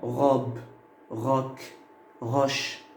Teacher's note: Comme vous voyez, j'ai mis le O ouvert. Il est ouvert, il n'est pas fermé. Pourquoi? Parce que la consonne, bien les consonnes qui viennent après le O ne sont pas le Z.